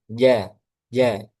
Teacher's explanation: sifatnya syiddah kuat. Kenapa? Karena tertutupnya tertutup rapatnya makhraj ya.